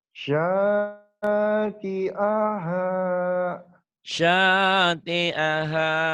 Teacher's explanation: Yang panjangnya sya-nya doang. Sama ha. Ti sama a pendek.